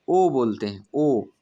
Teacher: ओंठ हमारा कैसा हो जाता है? गोल हो जाता है। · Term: वृत्ताकार